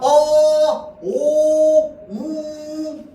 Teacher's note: 우 계속 똑같아요. 입술의 모양이랑 안에 있는 혀의 위치랑 다 똑같아요. 처음에 발음할 때부터 발음이 끝날 때까지. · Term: 단모음